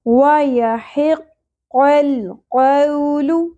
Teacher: واو ساکن سے پہلے زبر، حرف لین نرمی سے ادا ہوگا. قو نہیں پڑھنا، ٹھیک ہے.